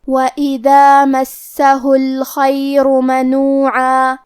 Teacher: کلمت الخیر میں حرف الخا ہے، لہذا ہمیں خا کو موٹی آواز میں پڑھنا ہے